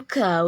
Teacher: Cara membacanya samar dengan dengung dan ditahan selama 3 harokat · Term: ikfa